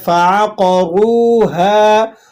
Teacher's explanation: را واو پیش ہے تو آپ نے موٹا بھی پڑھنا ہے اور ایک الف تک کھینچ کر بھی ادا کرنا ہے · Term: واو مدہ